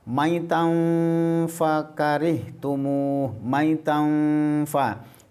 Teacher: Ikhfa itu artinya samar. Samarnya ini dari begitu dibaca maitan, posisi bibirnya ini menuju huruf fa. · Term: bacaan ikhfa